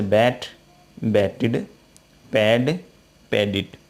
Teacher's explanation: ऐसे वर्ब जिनका अंत टे और डे ध्वनि से होता है उसके अंत में डी या ईडी जोड़ने पर वह इड की ध्वनि देती है। जैसे बैट, बैटिड, पैड, पैडिड, क्योंकि ये दोनों टे और डे से समाप्त हो रही हैं।